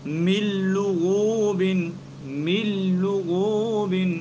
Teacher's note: دیکھیں اصل میں من اور لغوب تھا تو نون ساکن ہے اس کے بعد لام آ رہا ہے تو اس لیے ہم ادغام تو کر رہے ہیں لیکن بلا غنہ کر رہے ہیں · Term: ادغام بلا غنہ